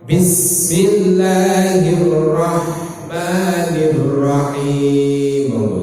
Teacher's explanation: Hak niku halus lepas di tengah tenggorokan.